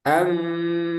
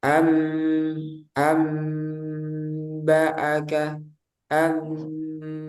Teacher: Berarti kita harus tahu makhraj dari mim, yaitu di kedua bibir, pertemuan bibir atas dan bawah dirapatkan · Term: intibakus syafatain